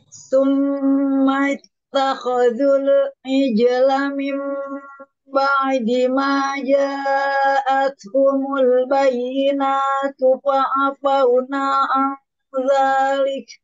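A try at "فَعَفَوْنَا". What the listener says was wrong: Ulang di kata fa'afauna, nanya belum selesai dua harokat tadi.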